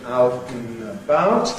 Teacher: Out and about, gives you syllabic N, out and about, they're out and about, but that syllabic N can lose its syllabicity, giving out and about, out and about. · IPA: [ ˈaʊt n̩ əˈbaʊt ]